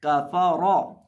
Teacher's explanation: अब यहाँ इस सफ़र के अंदर हमारे पास 3 हरूफ हैं, काफ, फा और रौ। इनमें से काफ और फा को बारीक पढ़ा जाएगा और रौ को पुर करके पढ़ा जाएगा क्योंकि रौ के ऊपर ज़बर है